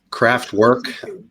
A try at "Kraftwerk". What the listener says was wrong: When I hear German words with English accent, it's like you put a needle in my heart. The R we don't pronounce the R so prominent, yeah.